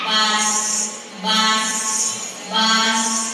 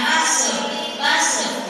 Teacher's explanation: Kenapa sin ini sukun dan tidak boleh mantul? Karena bukan huruf qolqalah